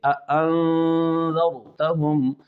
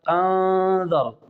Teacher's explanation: میں تحقیق کا قاعدہ استعمال کریں گے۔ انذرتہم، نون پر انذر، نون کے بعد ذال آ رہا ہے اخفاء کے 15 حروف میں سے، لہذا یہاں پر اخفاء مع الغنہ کریں گے